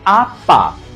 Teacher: veja que a palavra pa que é um substantivo é pronunciada com maior força expiratória e por isso ela é uma monossílaba tônica já o a um artigo definido é pronunciado com menor força